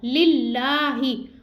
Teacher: अब यहाँ पे देखिए अल्लाह अज़्ज़ व जल का लाम है, अल्लाह के लाम से पहले हर्फ के नीचे ज़ेर है तो इस लाम को बारीक पढ़ेंगे और लाम के ऊपर खड़ा ज़बर इसको खींच के भी पढ़ेंगे